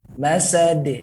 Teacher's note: bukan pakai tengah langit, tapi ujung lidah nempel ke gusi